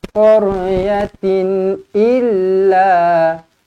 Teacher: Berikan tekanan pada huruf lam ini kerana ada sabdu di atasnya. Illa, la panjang 2 harakat sebab ada alif.